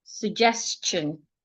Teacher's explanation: The s before the t makes the t sound like ch.